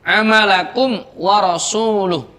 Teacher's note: di situ ada mim sukun bertemu dengan wawu cara membacanya mim sukunnya dibaca jelas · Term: izhar syafawi